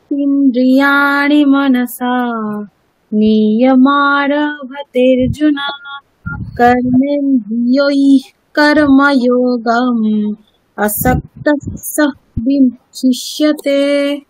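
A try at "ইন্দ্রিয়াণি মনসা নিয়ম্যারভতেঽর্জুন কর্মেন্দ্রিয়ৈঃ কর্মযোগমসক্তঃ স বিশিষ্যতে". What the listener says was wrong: আচ্ছা ওখানে আসক্তঃ সঃ এরকম উচ্চারণটা কিভাবে এলো ওখানে? হ্যাঁ ঠিক আছে, অসপ্তাহ স আমি দন্তে সয়ের পরে স্ট্রেস দিলেন, মানে স্ট্রেস দেওয়ার কোনো দরকার না, ওটা মানে নর্মাল যেমন চলছে তেমনই চলছে।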